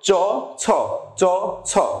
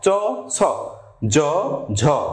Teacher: চ ছ বললে আমাদের কন্ঠটা কাঁপছে না। কিন্তু জ ঝ যখন আমি বলছি তখন আমাদের মধ্যে একটা ঝংকারের সৃষ্টি হচ্ছে।